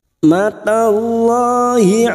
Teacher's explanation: Lam jalalah yang sebelumnya fathah kita baca tafkim atau tebal.